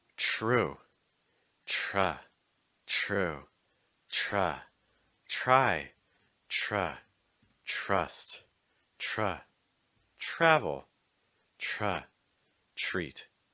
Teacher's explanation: a truh sound with a TR has a very similar sound to a CH with a little bit of an R added after it